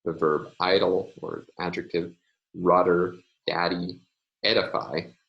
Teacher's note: In daddy, it's the stop in the middle of the word, which is tapped.